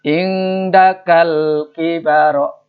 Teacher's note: itu alif lamnya dibaca, di depannya nggak ada tasdid, makanya disebut lam komariah